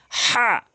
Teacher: উভয়টি হলকের শুরু থেকে উচ্চারণ করে। অথচ এই হাটি হলকের মাঝখান থেকে